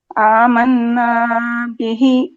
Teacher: نا پہ غنہ کے بعد پھر نا پہ دیر بھی کیجیے کیونکہ مد اصلی ہے